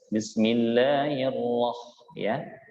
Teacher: Tapi kalau riwayat Hafs itu agak tebal. Ro tidak juga terlalu o, juga tidak sampai berbunyi ra ya. Jadi ro pertengahan.